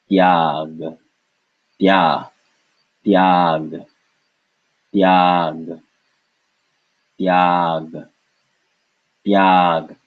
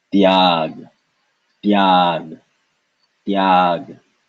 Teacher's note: This is a the, well, a T really, a Hindi T sound, the soft T, soft T with no air, followed by ya